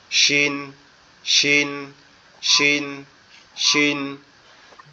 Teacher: শিনটা হচ্ছে আমাদের জিহ্বার মধ্যকান উপরের তালুর সঙ্গে লাগায়। তো এটা লাগাইতে হলে আমাদের দুই দাঁতের পাটি একসাথে লেগে রাখতে হবে চেপে।